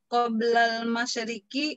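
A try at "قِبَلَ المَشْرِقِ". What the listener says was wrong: Bukan qobla ya, qibala. Qibalal masyriqi wal maghrib.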